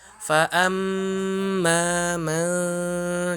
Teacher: ikhfa di sini antara huruf n dan huruf m di tengah-tengah. Suaranya di hidung, khoisyum di hidung. Ketika hidung ditutup pasti suaranya hilang.